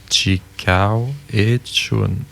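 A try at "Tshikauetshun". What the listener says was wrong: Chikawechun. Chikawechun, TSH, il manque un SH. TSHUN, la fin de la terminaison. TSHUN. TSHUN.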